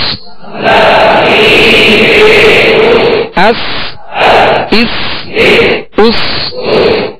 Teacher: سین کو سیٹی کی آواز میں سختی سے ادا کریں گے